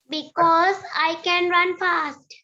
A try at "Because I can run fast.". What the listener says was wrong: Because I can run fast. මේ s එක z වගේ pronounce කරන්න.